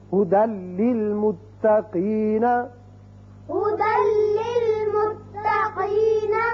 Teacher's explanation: دال کی ایک زبر لام سے ملے گی اور بغیر غننے کے پڑھا جائے گا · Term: ادغام بغیر غنہ